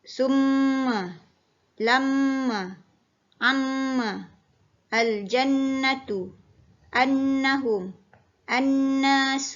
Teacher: cara bacaan wajibul ghunnah adalah dengan menekan suara pada huruf mim dan Nun disertai dengan dengung sekadar 2 harga